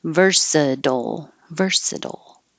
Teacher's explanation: say versatile but it's more British English than American English Americans are going to change that t to a D